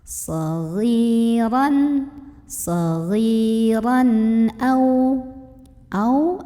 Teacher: Karena ada tanwin fathah yang ketemu sama huruf hamzah. Maka cara membunyikan tanwin fathahnya ini adalah dibunyikan dengan jelas. Bunyinya an dan tidak ditahan ya. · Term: idhar halqi